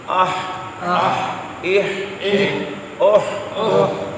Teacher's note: اگلا ہا، حلق کے وسط سے، درمیان سے